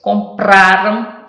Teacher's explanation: Compraram é o pra que é mais forte